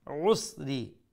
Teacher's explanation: make sure you pronounce the عين from the middle of the throat. عسري عين again middle of the throat.